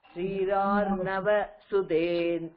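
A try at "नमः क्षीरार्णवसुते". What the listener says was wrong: first நமஹ இருக்கே, நம க்ஷீரார்ணவ சுதே,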